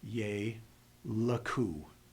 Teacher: It doesn't need the support of the next consonant. So, after a long vowel, the schwa will be vocal. It's going to transition you forward into the rest of the word.